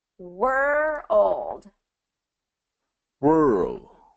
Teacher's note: we got to make sure we get that dark l in there